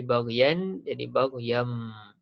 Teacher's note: Kita tukarkan daripada bunyi nun kepada bunyi mim. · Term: iklab